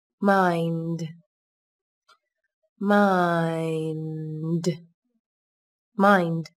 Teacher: Các bạn lưu ý, từ này có chứa nguyên âm đôi I. Chúng ta đọc âm A và âm I nối với nhau. Âm A đọc dài hơn một chút là được nhé. Cuối cùng là phụ âm hữu thanh D xuất hiện ở cuối từ.